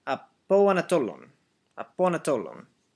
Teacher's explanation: the O sound blends in pretty carefully with the A sound as if it was one big word